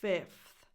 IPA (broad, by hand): fɪfθ